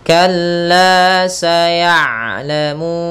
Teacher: ain sifat bainiyahnya tengah-tengah, yaitu tidak terlalu dialirkan suaranya dan tidak pula terlalu ditahan suaranya